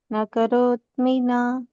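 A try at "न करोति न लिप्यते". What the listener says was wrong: ಕರೋತಮಿ ಹೇಳಬೇಡಿ ಕರೋತಿ ಅಷ್ಟೇ ನ ಕರೋತಿ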